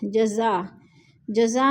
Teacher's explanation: جزا میں مد متصل ہے، 4 الفی مد ہے، 4 الف کے برابر ہم نے اس کو کھینچ کر پڑھنا ہے